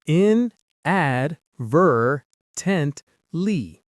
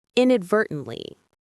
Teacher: The stress is on the third syllable. Ver. That's the one you want to say with the most energy.